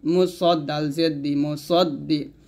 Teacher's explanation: এখানে সদ উচ্চারণ করতে হবে, মুসাদ্দি বলা যাবে না, সদ মোটা করে